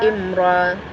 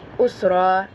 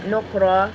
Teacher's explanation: karena ra bertanda baca fathain, dibaca tebal